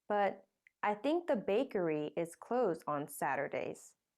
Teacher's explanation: the bakery is now old information so it gets a rising tone the new information with a falling tone comes at the end